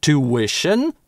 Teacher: Некоторые британцы и практически все американцы говорят two-ition, без [j].